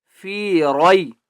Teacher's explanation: را کو موٹا کر کے پڑھیں گے